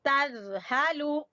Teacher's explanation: فا زیر تا فت، نون زبر نا، فتنا، تا دو زبر تن، فتنا تن، تا زبر زال تز، ہا زبر ہا، تز ہا، لام پیش لو، تز ہالو، تز نہیں پڑھنا، زا نہیں، یہ زال ہے، زال زبان کی نوک اور سامنے والے دو دانتوں کے سرے آپس میں ملیں گے